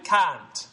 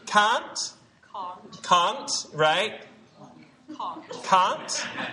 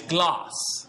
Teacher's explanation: But in Britain, they will say something that sounds like the ah in father. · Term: ah vowel